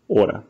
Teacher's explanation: Then we have the H sound, which is pretty simple because there really is none.